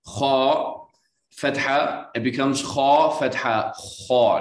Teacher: when you add the ah sound to a heavy letter, it gets fused with that ah sound. So it's not a clear ah anymore, okay? So for example, kha, fatha, it becomes kha, fatha, kha, not kha.